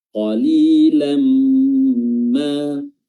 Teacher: huruf tanwinnya atau harakat tanwinnya ini dimasukkan ke huruf mim, diidghamkan lalu disertai dengan gunnah atau suara hidung yang tentunya ini otomatis ada karena huruf mim mengandung gunnah. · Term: idgham bi gunnah